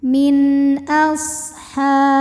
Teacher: Kemudian ada hukum izhar halqi. Sebab nun sukun menghadapi huruf halqi atau huruf tenggorokan yaitu hamzah. Maka nun sukun dibaca jelas.